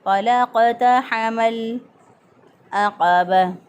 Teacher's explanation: लाम चूँकि हरूफ़ कलकला में से नहीं है इसलिए यहाँ पर कलकला नहीं होगा